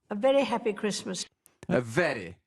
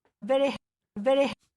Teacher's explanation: Le son R tape sur le devant.